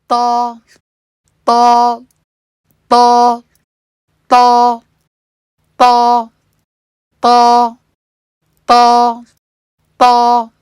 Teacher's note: چونکہ یہ مفخم حرف ہے، اس میں ایک آ کی آواز ہونی چاہیے۔ یہ آ کی جو آواز ہے یہ وہی زبان کو پیچھے سے اٹھانے اور زبان کے بیچ میں کرو لانے سے آئے گی۔ ہونٹوں کو گول کر کے اس آواز کو اگر آپ پیدا کرنے کی کوشش کریں گے تو پھر کیا ہوگا کہ ایک غلط آواز ہمیں سنائی دے گی۔